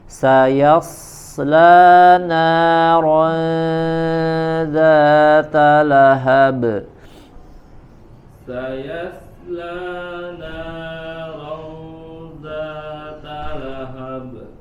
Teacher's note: huruf shad sempurnakan, shafir kemudian tebal